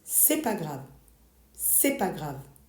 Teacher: We have another case for ce n'est pas grave. You drop the ne, it becomes c'est pas grave.